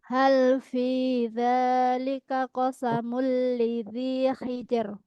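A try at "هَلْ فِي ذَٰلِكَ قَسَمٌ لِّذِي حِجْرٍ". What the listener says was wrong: Tipis hijr, tipis kalau itu hijr. Ya, hal fi dzalika qasamul lidzi hijr.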